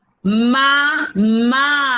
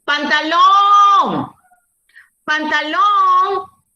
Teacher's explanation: Mayor fuerza de voz, última sílaba